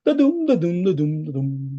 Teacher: So the pattern is unstressed, stress. So it's 2 syllables, right? Unstressed and stress. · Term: iambic